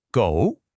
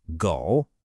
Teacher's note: So, the word for dog in Mandarin is go, and it's pronounced go. It's just one syllable, and the tone kind of dips down and then comes right back up.